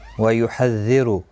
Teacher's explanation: وَيُحَذِّرُ را پیش کی وجہ سے پر پڑا جائے گا